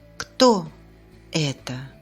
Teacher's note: the tone first rises on the question word and then falls on the last stressed syllable.